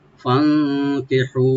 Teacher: ফান, ফাটাকে open রেখে নুন সাকিন এখানে আমরা একটু একফা করে করবো, আমরা গুণা করে ফান কি বলবো, আর হাটাকে রাইট দিয়ে একালিফ টানবো।